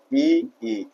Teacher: इ चाहे ह्रस्व हो या दीर्घ हो दोनों का ही उच्चारण स्थान आपका क्या रहेगा? तालु ही रहेगा।